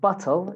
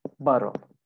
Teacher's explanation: a bottle of water so i said that in american accent when we have two teas together it becomes like a d sound that comes from our throat